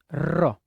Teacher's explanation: જેનું ઉચ્ચારણ વખતે જીભ જે છે એ ધ્રુજે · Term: પ્રકંપી વ્યંજન